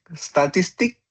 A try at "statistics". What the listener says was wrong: But you have to remember statistic in basis with s. Statistics with s.